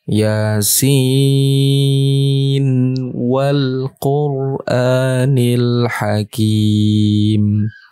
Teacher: karena ini huruf muqatah pengecualian nunnya dibaca jelas Bukan dibaca idgham bighhunah